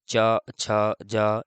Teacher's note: च, छ, जा ये सब जीभ ऊपर टकराती है, इन्हें तालव्य कहते हैं